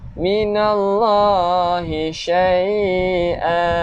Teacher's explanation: Nama Allah, lafzul jalalah. Panjangkan 2 harakat pada nama Allah.